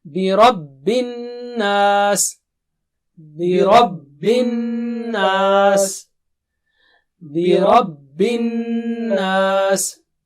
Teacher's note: Gunna means sound from your nose and double stretch.